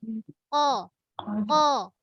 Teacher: Makhraj qaf. Pangkal lidah. Lelangit lembut.